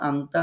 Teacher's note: অর্থ হচ্ছে গোপন করা ইখফা শব্দের অর্থ হচ্ছে গোপন করা এজন্য আমরা নুনটাকে গোপন করে ফেলেছি কোথায় গোপন করেছি নাকের মধ্যে গোপন করেছি এজন্য নুনটা আর সরাসরি নুন শোনা যাচ্ছে না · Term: নুন সাকিনের ইখফা